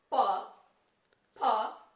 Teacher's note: आपके होंठ बार बार एक दूसरे में टच होंगे फिर अलग होंगे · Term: ओष्ठ